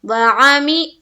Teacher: یہاں پر معروف پڑھیں گے، مجہول سے ہمیں بچنا ہے